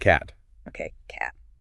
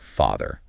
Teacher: in Scottish English that a sound is going to be shorter than the a in a word like Father oh I see it's those small changes in vowel length that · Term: Scottish vowel length rule